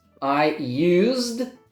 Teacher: So again, no E sound, and the S has a Z sound.